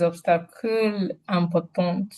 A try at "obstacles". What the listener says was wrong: Obstacle. You are pronouncing English.